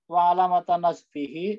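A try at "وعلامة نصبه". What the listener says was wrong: wa alamatun nasbi maksudnya nggak ada hi-nya itu Pak. Wa alamatun nasbi.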